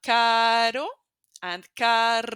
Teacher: remember in Spanish letter r is just behind your teeth